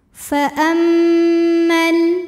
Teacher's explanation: Namun dibaca panjang 2 harokatnya hanya saat berhenti saja. Kalau wasal madnya gugur, mimnya jadi pendek. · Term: takhallus bil hadfi